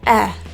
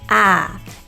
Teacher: for the eh sound, our tongue will be in a much more higher or neutral position versus ah, your tongue will be in a lower position. And because our jaw is also lower, it's much easier to get our tongue in a lower position as well.